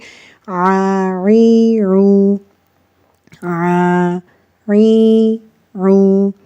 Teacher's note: حمزہ یا الف کی آواز آ کی ہوتی ہے، جیسے نارملی ہم آ ای او پڑھتے ہیں، لیکن عین کی آواز ہمیں آ گلے پہ تھوڑا سا زور دے کر پڑھنی ہوتی ہے تاکہ عین اور الف میں فرق کیا جا سکے